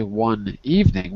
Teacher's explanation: we pass the n to the word evening